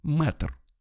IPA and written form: mɛtr (мэтр)